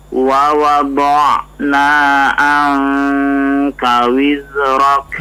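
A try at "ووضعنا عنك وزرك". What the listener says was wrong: Ya, sudah lebih bagus.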